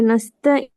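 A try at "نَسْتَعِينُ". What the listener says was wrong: நஸ்தாயில நீங்க அப்படி நீட்டல, அப்படி நீங்க நீட்டல. நீங்க டைம் அதை விட கூட எடுத்து நீட்டினீங்க. உங்களோட ஓதல் சரி, நீங்க ஓதினது சரி. சம்திங் அங்கே அந்த இடத்துல ஈக்குது.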